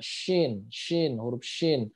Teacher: jadi ee bas seperti itu ya Bas ini sifat ciri khas sifat dari syin adalah menyebarnya aliran nafas gitu tafasyi dia ya tafasi itu adalah menyebarnya aliran e udara